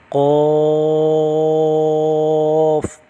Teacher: قاف کی آواز موٹی بھی ہوگی اور اس پر مد بھی ہوگا